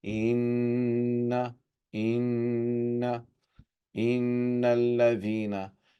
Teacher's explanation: Whenever the word, a letter noon and meme have shadda, the rule of gunna is applied. The way we pronounce this is that we prolong as we're joining noon mashduda or meme mashduda.